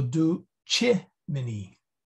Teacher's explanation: the accent is right there on the I